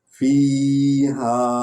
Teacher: یا حرف لین ہے، اس کو تھوڑا سا لمبا کریں گے